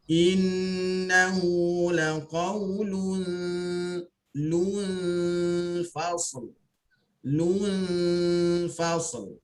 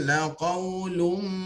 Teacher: Jelaskan lu, kemudian baru baca nun yang ikhfa, kemudian baru baca fa.